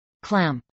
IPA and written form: klˈæmp (clamp)